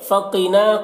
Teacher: فقینا، قاف کو پر پڑھیں گے، نا میں الف مدہ ہے، ایک الف کے برابر کھینچ کر پڑھیں گے